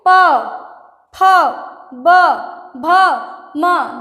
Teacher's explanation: जैसे प, देखिए प फ ब भ म, दोनों ओठों को चिपका के बोला जा रहा है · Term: ओष्ठ